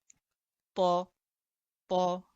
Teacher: এটার উচ্চারণ আমরা জিহ্বার আগা থেকে করব, তবে একটু মোটাভাবে করব